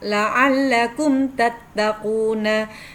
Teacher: Mim sukun bertemu dengan huruf ta, la'allakum tattaquna. Dibaca jelas dengan bibir yang rapat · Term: idhar safawi